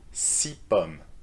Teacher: 6 pommes. No, so the s sound disappears if you add a noun after it